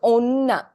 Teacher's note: It's not ona, female. It's o-na. There's a bit of a pause there, right? You emphasize the onna.